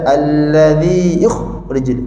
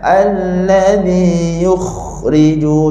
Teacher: kha dekat sini ada angin dan suara kena hidup. Jadi jangan baca allazi yukhrijun, kita tak nak baca dengan suara terputus. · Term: kha yang cantik